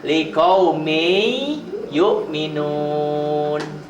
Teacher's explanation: Tetapi karena ini ketemu ya huruf idgham, liqauminnya n-nya jadi berubah jadi y. Liqaumin yu'minun ditulisnya, dibacanya liqaumi yu'minun.